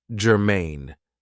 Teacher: stress is on the second syllable